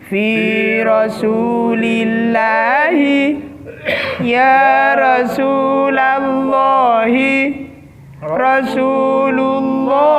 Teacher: Jadi Allahi yang pertama itu dibaca tipis, yang kedua, yang ketiga itu dibaca tebal.